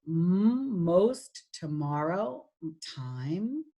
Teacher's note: it is voiced and has no voiceless cognate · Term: nasals